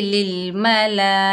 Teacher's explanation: हुरूफ़े मद्दा के बाद उसी कलमे में हमज़ा असली आ रहा है, तो यहाँ मद बनेगी मद्दे मुत्तसिल वाजिब। इस मद को 5 अलिफ की मिकदार खींचकर पढ़ते हैं, जैसे लिल मला, हमज़ा के नीचे ज़ेर बगैर खींचे पढ़ेंगे।